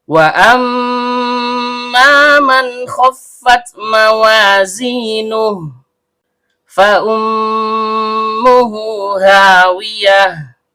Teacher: Mim huruf bibir, karena mimnya bertasydid, maka terjadi hukum bacaan gunnah asli. Dibaca dengung dan setiap dengung keluar dari hidung. Kemudian, karena mimnya berharokat fathah, diikuti alif layyinah, maka terjadi hukum bacaan mat tabi'i, panjang 2 harokat dan setiap panjang keluar dari rongga mulut.